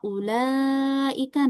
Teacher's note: Tarji itu menggelombangkan suara ya. Seperti nadanya dinaikkan lalu diturunkan dalam satu mad ya. Maksudnya dia memainkan nada ya ketika membaca huruf mad ya.